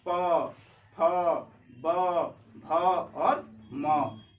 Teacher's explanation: प बोलते समय हमारे दोनों ओठ क्या हो रही है? एक दूसरे को स्पर्श कर रही है। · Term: ओष्ठ